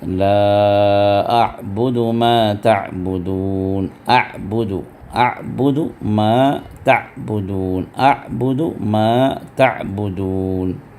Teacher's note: درمیانی حلق سے جہاں سے حا نکلتا ہے وہیں سے عین بھی نکلتا ہے